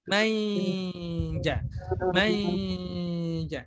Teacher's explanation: Shin dan jim itu kan lidah bertemu dengan agak ke atas. Berarti posisinya itu tengah lidah itu agak menempel atau hampir menempel di makhraj huruf shin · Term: dengung ikhfa